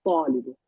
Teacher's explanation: There is alif lam, but you don't pronounce the lam. You do the shadda. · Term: shamsiya